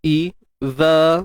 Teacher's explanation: makhraj bagi huruf zal ni kena keluarkan sedikit hujung lidah.